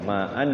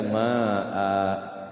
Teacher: Nah, fathah tanwin itu di kalau waqaf dia panjang 2 harokat mad iwad namanya. Ma'an dibaca ma'a.